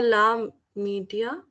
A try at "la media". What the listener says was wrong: Media. Very good.